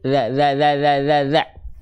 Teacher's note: huruf zal itu ujung lidahnya dikeluarin sedikit.